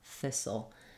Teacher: the L Sound is a dark l so you may have a little bit of a schwa sound between this and the UL I've written that for you here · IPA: /θɪsl/